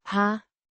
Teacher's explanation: pronounced har, with a short a, sound like in hat